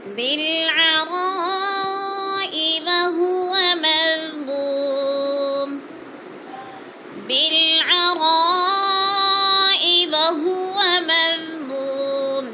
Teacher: بالعراء پہ مد متصل ہے، 4 الفی مد ہے